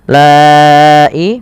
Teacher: Lai mad wajib muttasil panjang yang 4 harakat atau 5 harakat